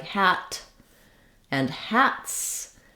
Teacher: for a voiceless sound, when we add the letter s, we're going to get another voiceless sound, the s, rather than the z. So for example, if I have a more simple word like hat and hats, then my letter s will say the s sound.